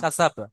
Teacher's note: কাসাব আসলে কাসা বা আছে কিন্তু শেষেটা সাকিন করে দেবেন, কাসাব। কাসাব বানানোর সময় বলবেন মা যে বা জবর বা, কিন্তু যখন মিলিয়ে পড়বেন হুম তখন বা সাকিন করবেন, কাসাব।